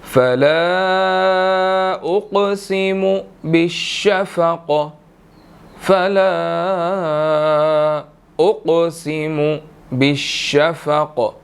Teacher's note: فلا لام کے اوپر چھوٹی مد ہے، 2 to 3 سیکنڈ اس کو لمبا کیا جائے گا